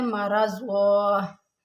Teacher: मरज़ा, अब यहाँ पर मरज़ुन है, लेकिन जब हम वक्फ करेंगे तो ये दो ज़बर की तनवीन अलिफ मद्दा में बदल जाती है